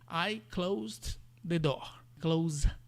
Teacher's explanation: Mas quando você está falando do verbo, aí tem uma pequena variação que esse s tem som de Z